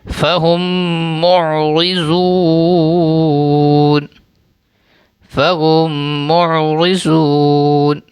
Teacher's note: میم ساکن کے بعد پھر میم ہے تو غنہ کر کے پڑھیں گے · میم کو میم میں ملا دیں گے، یعنی ایڈ کریں گے اور غنہ کر کے پڑھیں گے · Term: ادغام شفوی